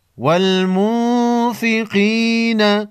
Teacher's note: نون ساکن پر غنہ ہوگا، اس کے بعد حروف خلقی میں سے کوئی حرف نہیں۔